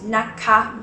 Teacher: If you want to use naka, make sure that you use naka both high tone